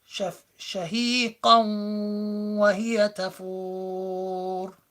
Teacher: So it's not just shafiqaw. You don't just get rid of the nun and make it into a waw, but you apply ghunna as well.